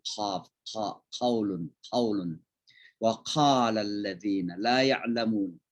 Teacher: kayak ada udara yang keluar dari tenggorokan kita bagian atas